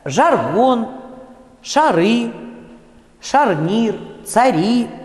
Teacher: на месте А после Ж, Ш и Ц произносится в первом предударном слоге такой же звук крышечка, то есть звук близкий к А.